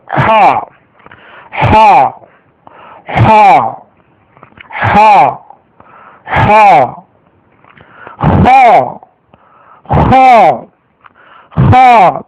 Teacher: தொண்டையின் மேல் பகுதியிலிருந்து வரக்கூடிய சத்தம் இது